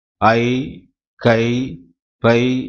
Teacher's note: ஒன்று ஐகாகர குறுக்கம். ஐ, கை, பை என்னும் எழுத்துக்கள் தனித்து வரும் இடங்களில் தமக்குரிய இரண்டு மாத்திரையில் குறையாமல் ஒலிக்கும்